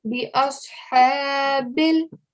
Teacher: the ha sound is going to come from the middle of the throat